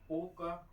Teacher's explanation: आ plus उ से ओ बनता है, तो उच्चारण स्थान अगर हम देखें, आ का पहले पता है कंठ से, उ का पता है ओठ से, ओठ, तब उसके बाद ओ का उच्चारण हो जाएगा कंठोष्ठ, कंठ और ओठ दोनों से मिलकर हो जाएगा